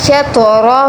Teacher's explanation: تو پر قلقلہ بھی آئے گا، یعنی ہلا کر تو کو پڑھنا ہے اور موٹا بھی پڑھنا ہے